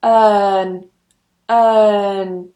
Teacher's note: I'm not pronouncing the R. In British English, we don't pronounce the R. In American, they do. · take the vowel, /ɜː/, and just stick an /n/ at the end of it for this word